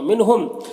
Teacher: بو میں واو مدہ ہے، ایک الف کے برابر کھینچیں گے۔ منہم، نون میں اظہار حقیقی ہو رہا، میم میں اظہار شفوی ہو رہا، دونوں کو جلد پڑھنا ہے